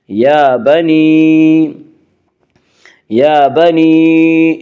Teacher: یا کے اوپر کھڑا زبر ہے، کھڑا زبر کو ایک الف کے برابر کھینچ کر پڑھیں گے۔